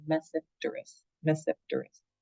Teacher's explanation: There's 2 genera, Psilotum, that genus, and then again, the T in front of another consonant in science is silent